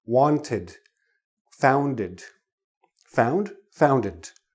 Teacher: T and D are too close to that last sound of D, so we need an extra little sound, an extra little syllable almost to separate the two sounds. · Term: id